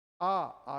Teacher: जीभ नीचे की तरफ गई तल की ओर और मुख पूरा खुला